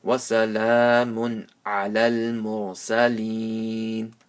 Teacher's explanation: And this is maddul arid waqfi, because after ya sakin with the zero before it, there's a temporary sukoon. So you stretch it 3 or 5 alifs.